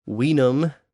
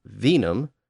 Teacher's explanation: late Latin sound shift which converted the W sound into the V sound in many Latin words so just as wiim meaning wine became venim the same thing